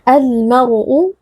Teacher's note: Kita baca alif lamnya dengan izhar atau dengan jelas. Al-mar'u, ra sukun sebelumnya berharokat fathah dibaca dengan tebal.